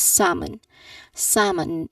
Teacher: There is silent L in there.